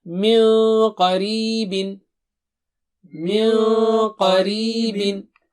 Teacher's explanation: یہاں پہ قا موٹا اونچا ہے تو نون ساکنہ موٹا اونچا ہوگا